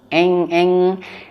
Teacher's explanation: ketika nun sukun persiapan ke huruf kaf, maka bunyinya menjadi eng, ya. Wa in, nah bunyi menjadi eng. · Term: ikhfa